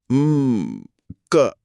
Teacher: जब क का उच्चारण खत्म होता है तो अंत में हवा का एक खुला प्रवाह होता है। हम क अरे हां बाद में अ की आवाज आती है।